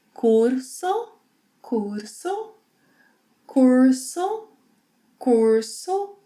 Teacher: whenever R is at the end of a syllable or at the end of a word, it may be r, a tap, it may be or h.